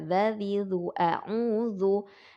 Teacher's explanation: dza ya berasal dari ujung ya, tepi lidah bertemu dengan ujung gigi seri.